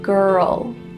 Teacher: And with the L, my tongue is coming beside my teeth. Girl. It's right there.